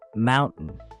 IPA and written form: ˈmaʊnʔn (mountain)